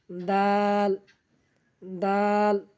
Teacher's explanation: দাল উচ্চারণ করব জিহ্বার আগা সামনের উপরে দুই দাঁতের গোড়ার সঙ্গে লাগাইয়া